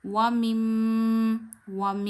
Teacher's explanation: यानी मीम की आवाज आप नाक में ले जाके एक उंगली जितनी ठहराते हैं। यह हर उस मीम में होगा जिस पे तशदीद होगी। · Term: गुना